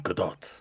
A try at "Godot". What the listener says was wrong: Godot. The T is silent.